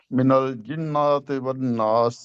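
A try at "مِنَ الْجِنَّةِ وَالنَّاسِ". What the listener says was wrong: من الجنت، نہیں لمبا نہیں کرنا، نون کو لمبا نہیں کرنا۔ جی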